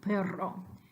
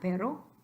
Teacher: But that's the trilled r, perro. Then regular R is the vibrante simple, which is just one R, pero.